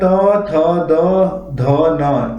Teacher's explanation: त वर्ग में आते हैं त, थ, द, ध, न, ये दांतों को स्पर्श करते हैं